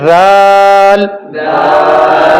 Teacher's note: زال کی آواز کو ہم موٹا نہیں کریں گے. یہ اس کی آواز باریک ہے، پتلی ہے